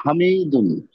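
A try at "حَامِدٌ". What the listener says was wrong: উচ্চারণটা একটু সুন্দর করে করেন হাতে টান হবে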